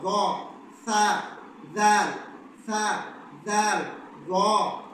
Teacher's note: اس طرح ذو ہے، موٹا جو ذو ہے وہ بھی ہماری زبان کے اور دانتوں کے، جب ہماری زبان دونوں دانتوں کے کنارے کو لگے گی اور تھوڑی سی باہر نکلے گی تب جا کے ذو ادا ہوگا